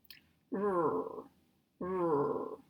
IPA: ɹ